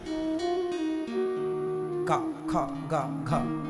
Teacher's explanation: का का कहां से निकल रहा है? कंठ से।